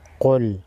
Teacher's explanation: قاف حروف مستعلیہ میں سے ہے، قاف کو موٹا پڑھیں گے